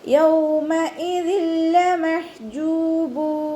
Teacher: ഹംസയുടെ മഖ്റജ് അഖ്സൽ ഹൽക്കാണ്, സൗണ്ടിനെ വ്യക്തമാക്കി കൊടുക്കുക.